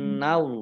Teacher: Innallaha, nun tasdid dibaca gunnah atau mendengung, 2 harokat.